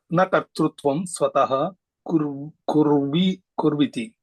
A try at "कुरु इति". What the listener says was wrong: Kurviti. Kuru iti. तत्र सन्धिः अस्ति अतः कुर्विति इति भवति अत्र विभज्य अहं वदामि भवान् अपि तथैव वदतु